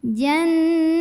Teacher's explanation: ada ghunnah musyaddadah karena ada Nun yang bertasydid maka cara membunyikannya bunyi Nun nya didengungkan bunyinya ditahan kurang lebih dua harokat